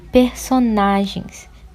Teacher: a sílaba tônica é o na, paroxítona, né, por ser a penúltima.